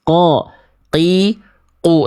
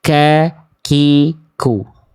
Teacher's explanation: Jadi ini yang membuat qof dan kaf itu hampir mirip karena qof itu lebih dalam sedikit tidak keluar nafas